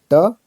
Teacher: मूर्धन्य अल्प प्राण अघोष व्यंजन वर्ण का उदाहरण है